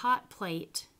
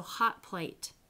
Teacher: So if you look at hot plate, you actually don't do the t. You don't release the t. It actually goes right into the p. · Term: assimilation of place